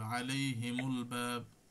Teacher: তো এই যখন এই সুকুন থাকবে, কিন্তু পরের হরফে যদি এই আপনার এই ই চলে আসে, সুকুন চলে আসে, তো দুই সুকুন তো একসাথে পড়া যাবে না, তখন এই মিমের পেজ দিয়ে পড়তে হবে